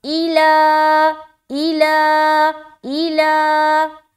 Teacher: تو یہاں پر دیکھیں حمزہ زیر ای, لام کھڑا زبر لا, ایلا ایلا ایلا. ای کو ہم نہیں کھینچ رہے, لا کو کھینچ رہے